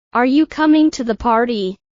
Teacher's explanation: Notice how the pitch rises at the end of the sentence, indicating it as a question. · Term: rising intonation